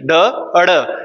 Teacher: इसमें क्या होगा हमारी जीवा उल्टा होकर हमारे तालु को टच कर रही है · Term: मूर्धन्य व्यंजन